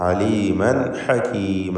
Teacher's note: അലീമൻ എന്നതിലെ തൻവീനിനെ ഇൽഹാർ ഹൽക്കി നൽകി മണിക്കാതെ വെളിവാക്കുകയാണ് വേണ്ടത്.